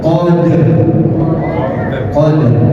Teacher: qadr dipantulkan bukan dihakatkan tapi dipantulkan